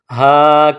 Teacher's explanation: ہا کو حلق سے ادا کریں گے۔